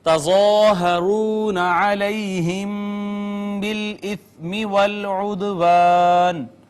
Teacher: ضا حروف مستعلیہ میں سے پر کر کے ہم نے اس کو پڑھا. الف مدہ ہے، واو کما قبل مدوم واو مدہ ہے، یا کما قبل مفتوح یا لین، میم ساکن کے بعد با آ گئی، اخفاء شفوی، اور اس کے بعد یہ دال پہ کلکلا ہم کریں گے، ساکن آئی ہے، واو کما قبل مفتوح واو مدہ ہے.